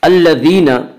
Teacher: یا مدہ کو ایک الف کے برابر کھینچ کر پڑھیں گے